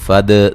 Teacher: قل قاف کو موٹا ادا کریں گے، فد دال کو ہلا کے پڑھیں گے، دال قلقلہ ہے